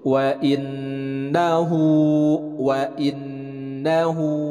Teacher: dalam huruf wa kemudian Nun bertasydid dibaca gunnah